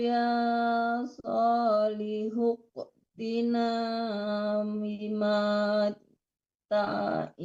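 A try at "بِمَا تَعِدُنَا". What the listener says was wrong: Ta'idu tidak ada yang panjang di situ. Bima ta'iduna. Ta'idu tidak ada yang panjang.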